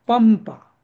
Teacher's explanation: त्या अनुस्वाराचा उच्चार प वर्गाच्या पाचव्या अनुनासिक शब्दा अक्षरासारखं होईल